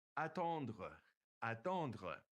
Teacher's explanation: notice it ends with that RE and it's pronounced kind of glottally